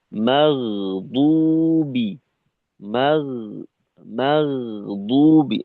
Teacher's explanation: গয়নের উচ্চারণটা মোটা নরম কোমল হবে।